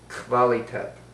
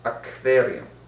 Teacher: Yiddish has no Q sound, so internationalisms are pronounced as a KV.